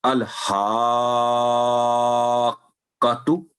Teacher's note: اس کا اپنا کوئی یعنی الف پر اس کو فتح کی ہم اس سے کام نہیں لیں گے، اور کاف پر کیونکہ تشدید ہے تو ہا کی آواز لمبی کر کے کاف پر روک لیں گے آواز، پھر اس کی تشدید آ کر کے پھر اس کی فتح، پھر تو الحاقۃ۔ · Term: مد کبیر